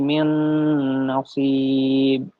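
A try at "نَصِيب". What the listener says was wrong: Sib. Qalqalah mana qalqalah? Ya, ini kalau Quran hukum tajwidnya berlaku ya.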